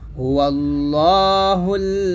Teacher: দেখুন এখানে লা বলা যাবে না ল বলতে হবে